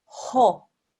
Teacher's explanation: comes from the very top of your throat right at the back of your mouth you round your mouth as you say haw-haw and if you go down to here